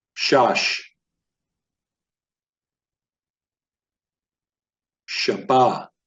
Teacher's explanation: notice I'm enunciating these words predominantly on the last syllable